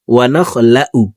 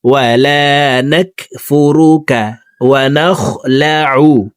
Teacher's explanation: আইন হরফকে হলকের মধ্যখান থেকে উচ্চারণ করব।